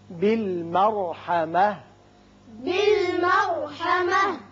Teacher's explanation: را پر ہوگا، تا ہتائیہ ساکن ہو کر ہا بن جائے گی